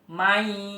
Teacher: Nun mati bertemu dengan huruf ya ya. Mayyakulu ya, dibacanya harus mendengung yang lama. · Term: idgham bi gunnah